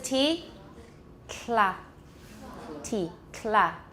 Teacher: make a tea and don't lower your tongue keep your tongue tip on your alveolar Ridge to make the L and there will be aspiration as well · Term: lateral release